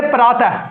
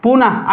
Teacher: विसर्ग, या हाकार जैसी, हा के उच्चारण से बोला जाता है